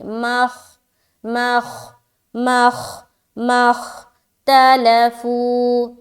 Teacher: اچھا میم کو خا سے ملاتے ہو، خا موٹی ہوگی